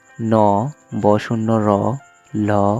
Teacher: দন্তমূলীয় ধ্বনি। জিভের ডগা উপরের পাটি দাঁতের গোড়া স্পর্শ করে যেসব ধ্বনি পাওয়া যায় সেগুলোকে দন্তমূলীয় ধ্বনি বলে।